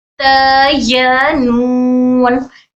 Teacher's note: नून के लिए नाक में भी हमारा वाइब्रेशन होता है।